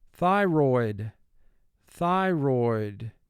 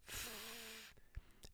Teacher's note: TH is representing its first sound, the sound th, and that's considered to be the voiceless sound for TH.